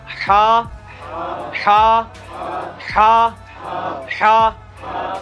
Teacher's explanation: हा का मखरज जो है ना यानी वस्त हलक